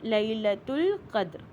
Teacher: دال کے اوپر کلکلا بن رہا ہے